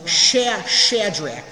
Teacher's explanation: the CH sound, that's sort of a hard K sound in a way.